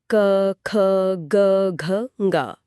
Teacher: गले के एकदम पिछले हिस्से में कंपन होता है। जीभ कहीं और नहीं टकराती। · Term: कंठ ध्वनियां, कंठ्य ध्वनियां